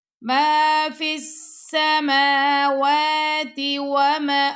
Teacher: تا کو لمبا کر کے نہیں پڑھنا، فوراً واو پڑھیں گے